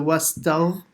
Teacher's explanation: Ghain from the top of the throat